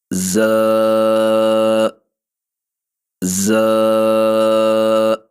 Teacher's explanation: اس کی آواز باریک ہے اور اس کی آواز کے اندر وسل بھی موجود ہے، سیٹی بھی موجود ہے